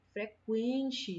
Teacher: A vogal é o E, né, que é a que está demorando mais, e a semivogal o U